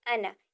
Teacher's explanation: انا میں حمزہ کے بعد نون ہے، اسے زیادہ لمبا نہیں کریں گے، انا، اسے ہم کھینچیں گے نہیں۔